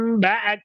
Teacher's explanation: menutup kedua bibir secara sempurna sehingga suaranya itu terkumpul, atau dengan furjah.